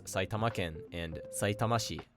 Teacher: Prefectures and cities have their accent change to drop before the second to last mora when adding ken or shi to the end of a word. Saitama is pronounced atamadaka in isolation, but it becomes Saitamaken and Saitamashi when the classifier is added.